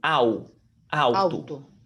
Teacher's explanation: O L é pronunciado como U